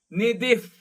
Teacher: ನಿಧಿಹಿ ಅಲ್ಲಿಯ ವಿಸರ್ಗ ಅರ್ಧ ಫ. ನಿಧಿಫ್ ಪಾತು ಧಿ ಮಹಾಪ್ರಾಣದ್ದು.